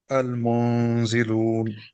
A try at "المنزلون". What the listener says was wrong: It needs to be lighter. منزلون.